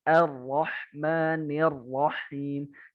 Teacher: Nah kalau Syam, dia benar-benar nempel kepala lidahnya, nempel. Nah, jadi getarannya cuma 1. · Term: ro-nya Syam